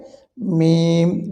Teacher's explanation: মিম দুই ঠোঁট হইতে এটি উচ্চারিত হবে দুই ঠোঁটের শুকনো জায়গা থেকে বা দুই ঠোঁটের ভিজা জায়গা থেকে